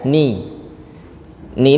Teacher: arrahmanirrahim yang perlu diperhatikan juga lafaz huruf nunnya ni ni ini jangan sampai jadi ne Kenapa jadi ne jadi ne karena mulutnya enggak dilebarin